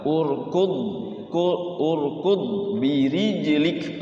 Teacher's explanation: Urqu-nya kan di sini ku ya ketemu d qu langsung urqu. Jadi tidak lepas, tidak mantul ya, tidak qalqalah. Urqu urqu birijik langsung ke ee ro ya e ke ba urud birijik.